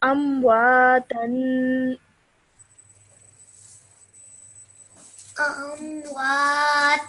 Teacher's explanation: Okay, so whenever you have tanween, make sure you produce that 2-second nasal sound at the end. So for example, over here, you have tanween on the ta.